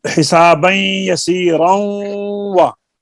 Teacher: क्योंकि तनवीन है नून के किनारे से निकलती है और वाव जो है ये दोनों होंठों से निकलती है, तो इनके मखारज अलग हैं। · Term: इदगाम मुतकारिब